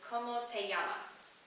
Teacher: como peyamas so anytime you see the double l like that it's not going to make the l sound it will make the sound like with the y